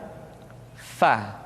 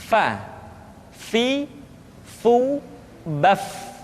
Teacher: Diucapkan dengan menyentuhkan ujung dua gigi seri kita bagian atas dengan bibir bawah bagian dalam. Fa. Seperti kita mengucapkan huruf F di dalam huruf Latin.